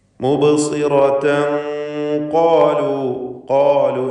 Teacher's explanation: ഖാഫിനും അലിഫിനും തഫ്ഖീമാണ്, ദീർഘാക്ഷരമായ അലിഫിലും തഫ്ഖീമാണ്.